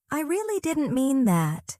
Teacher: That gentle fall in tone shows sincerity and self-control.